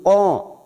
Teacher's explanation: Muri ya fathah berdiri harakat ya qod qod huruf qo qo ini Huruf tebal ya jangan samakan dengan Kaf